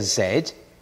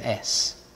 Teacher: What you hear with the Z, the Z, the Z, are the vocal cords vibrating, and we call that a voiced sound.